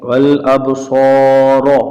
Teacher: را کے اوپر زبر ہے تو اسے پر آواز سے پڑھیں گے، را نہیں پڑھیں گے۔